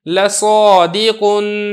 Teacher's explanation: الف سے پہلے صاد ہے جو کہ حروف مستعلیہ میں سے ہے، لہذا ہم نے الف کو یہاں پہ پر کر کے پڑھا ہے